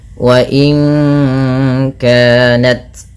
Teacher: Nun mati bertemu kaf, suaranya disamarkan ke kaf ya, terdengar bunyi wa inka langsung kepada makhraj huruf ka